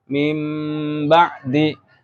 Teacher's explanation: Suara nun sukun atau tanwinnya diganti dengan mim. Jadi bunyi un ya berarti bunyi in berarti im kayak gitu aja. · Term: iklab